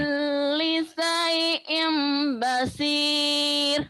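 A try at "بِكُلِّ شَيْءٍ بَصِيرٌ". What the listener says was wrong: Shinnya gede. Gede shinnya syai'. Bikulli syai'im basir.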